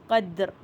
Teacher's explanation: دال کے اوپر کلکلا ہو رہا ہے، قدر، کلکلا کا مطلب ایکو کرنا